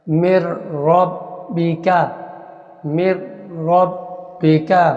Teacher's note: را کو باریک پڑھا، کیوں کہ پچھلی زیر کے ساتھ کنیکٹ ہو رہی ہے، تو جب مر کہا نا، مر، تو اس کو باریک پڑھیں گے۔